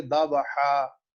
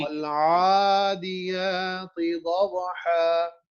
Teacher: دو زبر کو بیسیکلی ساکن کر دینا ہے اور ایک الف پڑھ لینا ہے